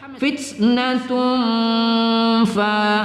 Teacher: ta marbutah berbaris tanwin bertemu Fa kita dengungkan pada ikhfa